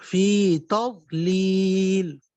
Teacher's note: تا باریک ہے، ضاد موٹا، لام آگے، دونوں لام باریک. فی تضلیل، تا بھی باریک، ضاد موٹا ہے.